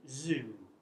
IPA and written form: zu: (zoo)